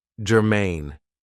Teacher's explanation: this is 2 syllables, and the stress is on the second syllable